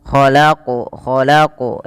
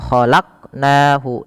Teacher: Pada lafal qof ini suara bunyinya dipantulkan. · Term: qalqalah